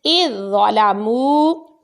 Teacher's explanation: اس لفظ میں ہم نے ذال کو نہیں پڑھنا، ضا پڑھا جائے گا کیونکہ ضا کو ہم پچھلے حمزہ متحرک سے ملائیں گے.